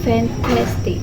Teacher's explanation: Stop sound T in the second syllable is strongly pronounced with aspiration